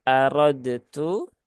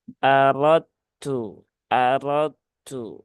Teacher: dalnya langsung masuk ke huruf tak ya